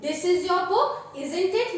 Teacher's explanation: while seeking confirmation, we use falling intonation. Falling intonation means the tone is, there is always a falling tone while seeking confirmation. · if you watch my tone, it is in a falling intonation